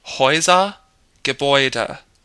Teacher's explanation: The umlauted A, when it's paired with a U, becomes Oi.